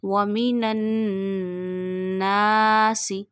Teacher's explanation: We take noon sound into the nose because of tashdid and stretch up to one alif. This is called noon mushaddad gunna.